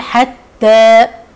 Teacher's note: الالف الخنجريه دي الف مد طبيعي حركتين